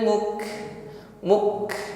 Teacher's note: ditekan pada huruf Kaf sukun ditekan pertama kali ya nampakkan sifat syiddahnya